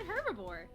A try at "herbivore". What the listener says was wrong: Why did you pronounce the H?